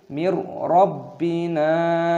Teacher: nunnya berharokat sukun bertemu dengan ro, dibaca idgham bila gunnah, dimasukkan tanpa berdengung. Jangan kita baca mir, tidak boleh.